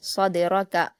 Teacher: صدرک، ان میں بھی صاد پر، را پر اور کاف پر تینوں پر حرکت جلد پڑھیں گے۔ دال پر جزم ہے تو صاد کو دال سے ملا کر قلقلہ کے ساتھ پڑھیں گے